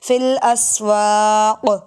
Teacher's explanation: کبھی کبھی پہلے حروف کلکلہ نہیں ہوتا، جیسے فی الاسواق یہ حروف کلکلہ نہیں بنتا، وقف کریں گے تو کلکلہ بن جائے گا کیونکہ ساکن ہو جائے گا